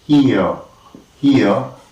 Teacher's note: we have two tongue positions that is ea and we call it a diphthong